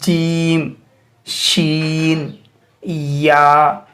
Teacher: ज़बान का जो ऊपरी पुश्त है उस पुश्त को हम ऊपर वाले तालू से लगा रहे हैं